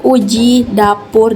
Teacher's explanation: u tinggi atas belakang bundar dan u tinggi bawah belakang bundar dengan grafen u contoh katanya uji dapur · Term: fonemu